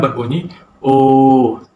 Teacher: Dari segi bentuk bibir pula ialah bibir dibundarkan, manakala pembukaan rahang ialah separuh sempit. Pada bahagian rongga mulut, belakang lidah dinaikkan separuh tinggi ke arah velum. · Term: vokal belakang separuh sempit